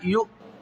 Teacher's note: یا حمزہ پیش یو پڑھیں گے اور اس کو جھٹکے کے ساتھ پڑھیں گے